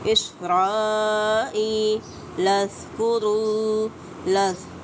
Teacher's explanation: ज़ाल को नरमी से अदा करना है, इसमें ना तो सख्ती आनी चाहिए ना सीटी आनी चाहिए